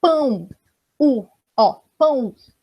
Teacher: Esse O, na verdade, não é um O, ele é um U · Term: semivogais